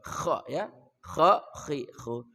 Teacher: kha dari ujung kerongkongan kha ya kha khi khu